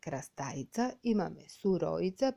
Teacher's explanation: Интервокалното В, односно кога гласот В ќе се најде помеѓу вокали, најчесто се губи